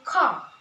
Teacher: In British, often drop the R at the end of word, like car. British say car, while in America pronounce the R clearly, like word car, they say car.